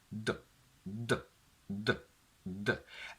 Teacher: They're both alveolar sounds, meaning that in both the tongue tip touches the alveolar ridge. But the sound D is a plosive, meaning that there is a full obstruction